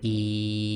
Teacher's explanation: you'll notice the middle of your tongue almost touches the top of your mouth